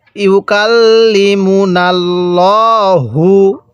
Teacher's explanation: লামের পূর্বে জবর আছে এজন্য লামটাকে মোটা করে পড়বো